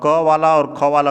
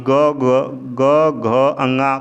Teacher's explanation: अर्थात जब क वाली लाइन ऊपर से नीचे तक बोले उच्चारण करेंगे और क वाला और ख वाला का उच्चारण करेंगे तो उसमें गले में कंपन नहीं होगा, और बाकी ग घ अंगा का उच्चारण करेंगे तो उसमें कंपन होगा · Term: अघोष